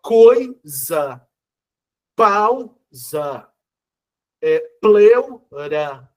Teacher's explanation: A, E, O fortes são vogais. I e U vindo depois são semivogais. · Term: ditongo